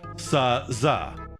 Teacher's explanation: Other fricatives are like f, fa, or v, va, okay? So both S and Z are alveolar fricatives. The way they differ is one is voiced and one is voiceless